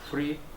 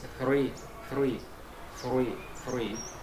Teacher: it's not free from freedom it's three three three three it's what we call uh interdental sounds